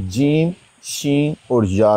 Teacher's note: वस्ते ज़बान जब ऊपर वाले तालु से मिले, वस्ते ज़बान जब ऊपर वाले तालु से मिले तो जीम शीन और या अदा होते हैं